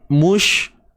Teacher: Mush ni dah ada sifat tafashi tuan-puan. Dia berhemburan udara ni.